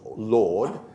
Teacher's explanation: in present-day english has a vowel halfway up the back of the cardinal vowel diagram a nice mid-close